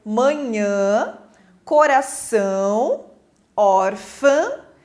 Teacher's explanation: parece que você fala com o nariz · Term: som nasal